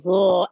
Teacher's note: the tongue comes out of the mouth slightly with vibration. Tongue is pressed against the edge of the upper front teeth. Air escapes thick sounding the.